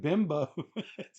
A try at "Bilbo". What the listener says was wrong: No, it's an L.